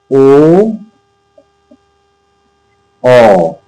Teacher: हमारे होठ भी गोल हो जाते हैं और आवाज कंठ से निकलती है। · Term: कंठोष्ठ